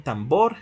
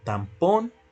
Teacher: esta característica nasal de la M pasó o se pasó hacia esa coda que originalmente es vibrante